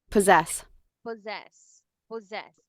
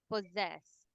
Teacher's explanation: when you see a word that has double s like this it should be Zed the buzzing sound okay the voiced sound